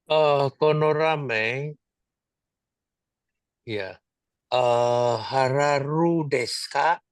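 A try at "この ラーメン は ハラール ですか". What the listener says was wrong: Iya, betul.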